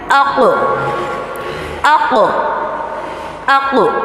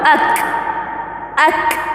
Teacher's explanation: قاف میں ہم نے نرم تالو لگایا تھا، لیکن کاف میں سخت تالو، اک، اک، سخت تالو یوز ہوگا۔